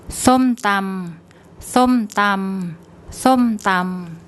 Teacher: So we've got the S initial consonant, then an M final consonant, and we have to put in an implied O vowel, som. It's high class consonant, and we're using the second tone mark, so we get a falling tone.